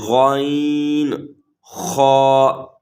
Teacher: یہ غین اور خا حلق کے اوپر والے حصے سے ادا ہوتے ہیں